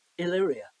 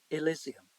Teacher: both words have four syllables stressed in the same iambic pattern both have the same vowel sounds throughout and both have an